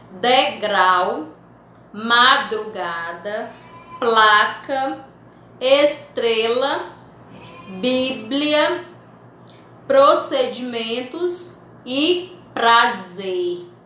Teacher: Percebam que na minha fala, eu falo as duas consoantes que estão unidas, juntas, chamada de encontro consonatal.